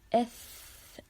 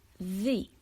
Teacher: the letter F, there is a flowing of air. We say F, there's air, right? But when we pronounce V, there's a vibration sound